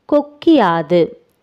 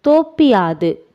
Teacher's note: குற்றியல் உகர சொற்களைத் தொடர்ந்து யகரத்தை முதல் எழுத்தாகக் கொண்ட சொற்கள் வரும் பொழுது குற்றியல் உகரத்தில் உள்ள உகரம் இகரமாக மாறும் அந்த இகரம் தனக்குரிய ஒரு மாத்திரை அளவிலிருந்து அரை மாத்திரை அளவாக குறைந்து ஒலிக்கும் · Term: குற்றியல் இகரம்